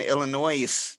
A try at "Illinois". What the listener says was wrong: One, it's Illinois. The S is silent. There- the S is-